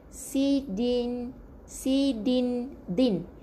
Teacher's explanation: Kena tekan sikit hujung lidah kepada pangkal gigi kacip, gigi gunting atas